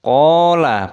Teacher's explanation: Qala panjang, qafnya ada tanda alifnya mad tabi'i 2 ketukan.